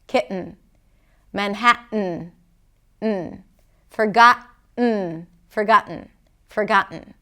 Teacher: One more place where we can find that glottal stop is when there is a T, a schwa, and an N, as in the word kitten.